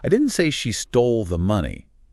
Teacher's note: Stress she I didn't say she stole the money meaning I said someone stole it but not her specifically. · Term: sentence stress